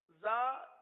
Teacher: زا یہ زبان کی نوک اور دونوں دانتوں کے اندرونی کنارے سے ادا ہوتے ہیں. زبان کی نوک اور دونوں دانتوں کے اندرونی کنارے. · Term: زا کا مخرج